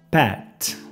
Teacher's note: note que la lengua toca el paladar parando el sonido t